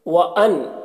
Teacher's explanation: نون میں اظہار حقیقی ہو رہا ہے، اسے جلد پڑھنا ہے۔